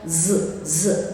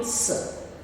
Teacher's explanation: you should feel the vibration of z z but not with s